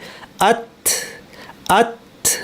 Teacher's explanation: আত আত বেশ শক্ত এবং একটু বাতাস কাফের মতো।